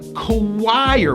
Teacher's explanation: with a strong hidden w sound choir with a high i going to an r